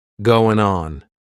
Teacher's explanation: we're going to drop that G at the end of the word going.